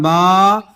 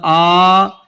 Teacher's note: کھڑا زبر برابر ایک الف کے کھینچا جائے گا، جیسے با کھڑا زبر با، بالف زبر با۔